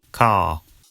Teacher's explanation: in car, the vowel sound is lengthened in place of the R sound.